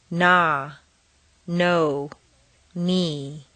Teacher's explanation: over the tip of the tongue the tongue is somewhat tense n is nasal air comes out through the nose the tongue is completely relaxed